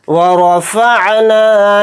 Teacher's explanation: نون الف زبر نا کو تھوڑا کھینچ کر پڑھیں گے